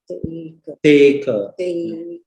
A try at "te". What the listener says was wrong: Long E, make sure you drag it, take.